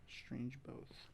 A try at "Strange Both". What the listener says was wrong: It's Both, actually. It's not both. It's not a long O. It's a short O.